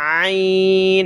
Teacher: عین کو گلے سے نکالتے ہیں زور لگا کر